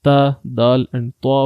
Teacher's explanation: These words are also read by the tip of the tongue and the roots of the upper front teeth. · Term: nitiya letters